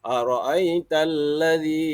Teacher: Pada ayat pertama itu terdapat mad asli pada bacaan alladzi. Pada bacaan alladzi, baris kasrah bertemu dengan huruf mad. Di situ dipanjangkan dua harakat.